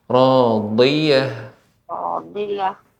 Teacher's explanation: Dotnya lebih ditampakkan lagi, yaitu bagian tepi lidah mengenai gigi geraham atas. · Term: huruf dot